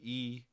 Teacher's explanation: a high front vowel would be e